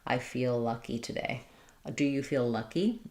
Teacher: if I'm saying I feel lucky, I'm really just going to kind of do one L there. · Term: linking